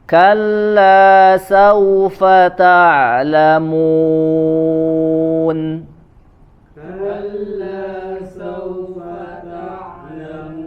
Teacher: Ta'lamun, harus bersih suaranya, tidak masuk ke hidung.